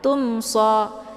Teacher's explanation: sukun bertemu dengan huruf shod ini dinamakan dengan izhar syafawi jadi cara bacanya bunyi mimnya di jelas dibaca jelas ya cukup ditekan saja tanpa harus ditahan